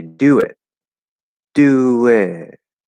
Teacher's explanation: you go up and then you do want to start kind of falling a little bit at the end it doesn't just go up and then you know Trail upward